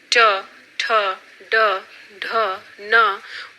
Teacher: ट, ठ, ड, ढ, न मूर्धन्य ध्वनियां रखी गई हैं